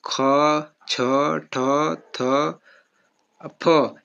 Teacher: अघोष तो है ही, उसके साथ साथ ये महाप्राण भी है। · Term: अघोष के साथ महाप्राण